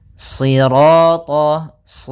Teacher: Ya, meskipun nanti ada yang mereka ada ee riwayat lain membaca dengan sinin, tapi kita membacanya dalam riwayat Imam Hafaz dengan shad ya si tebalkan shinya sirat sh sambil pangkal lidah kita ee apa? Karena shad itu pangkal lidah kita terangkat dan melekat karena dia huruf idbaq siro. Kemudian rnya ro tafkhim.